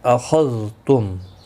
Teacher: خا مستعلیہ ہے، پر پڑھا جائے گا